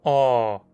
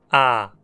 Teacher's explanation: A vogal O, como em pó, é arredondada. Note como seus lábios se arredondam para formar um círculo. O. Já a vogal A, como em pá, não é arredondada.